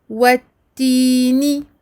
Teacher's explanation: Donc là, je ne vais pas faire le hams comme on faisait dans les mots de la première ligne parce que je suis en plein milieu de la shadda. Donc je bloque sur le point de sortie du ta. Donc le bout de la langue sur le palais à la limite des incisives supérieures.